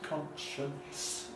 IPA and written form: ˡkɒntʃənts (conscience)